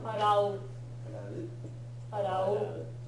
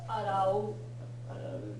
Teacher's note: Again, in terms of pitch accent, the u is the lowest pitch.